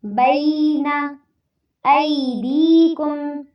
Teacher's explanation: ای میں یا ساکن سے پہلے پھر زبر آ رہی ہے تو یہاں پر لین ہوگا ، اور دیکم میں یا ساکن سے پہلے زیر آ رہی